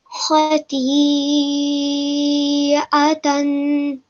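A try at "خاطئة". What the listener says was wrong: Excellent. Mashallah, you did really, really well to pronounce those words correctly with the correct amount of time being given to Madul Kabir.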